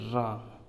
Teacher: जिह्वा जो नोक है वो रगड़ के साथ ऊपरी भाग में टच करते हुए बोली जाती है रा, जिसमें आप उच्चारण करके देख लीजिए तो ये लुंठित होती हुई बाहर ध्वनि आती है, तो इसको लुंठित वर्ण कहा जाता है रा को, या प्रकंपित वर्ण कहा जाता है।